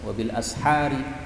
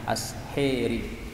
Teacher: wabil ashari boleh dibaca imalah asheri